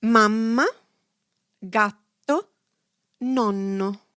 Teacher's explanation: When a consonant is doubled, you should stress the sound of that letter by elongating it slightly.